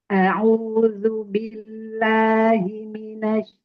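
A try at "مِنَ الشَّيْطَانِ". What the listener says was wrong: Deraskan suara aliran tafasyinya, udaranya. Syinya kan bertasydid ya. Jadi kurang sedikit mengalir suaranya. Tahan dulu.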